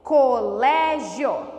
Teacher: Então, é paroxítona, porque o lé, que é a penúltima sílaba, é tônica